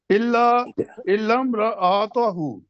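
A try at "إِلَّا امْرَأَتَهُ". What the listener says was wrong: نہیں، آتا ہوں، تا کو لمبا نہیں کریں.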